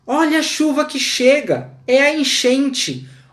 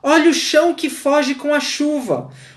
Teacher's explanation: Agora nós temos uma sucessão de fonemas fricativos. Sobretudo, o sh.